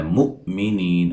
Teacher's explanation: حمزہ کو جھٹکے سے ادا کریں گے، نیہ مدہ ہے، وقفاً بڑی مد کے ساتھ پڑھ سکتے ہیں.